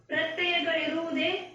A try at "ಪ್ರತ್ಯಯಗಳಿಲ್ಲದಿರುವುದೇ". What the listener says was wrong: ತಪ್ಪು ತಪ್ಪು ಪ್ರತ್ಯಯಗಳಿರುವುದೇ ಅಲ್ಲಿ ಎಷ್ಟು ಮೂರು ನಾಲ್ಕು ಅಕ್ಷರ ಬಿಟ್ರಿ